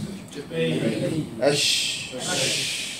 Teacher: So the widest gap and the most spreading of the letter is sheen.